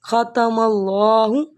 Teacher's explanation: ختم، خا کی آواز نکالیں حلق سے، ختم اللہ۔ اب دیکھیں اللہ سے پہلے زبر ہے، اس وجہ سے ہم اس کو پور کر رہے ہیں، موٹا کر رہے ہیں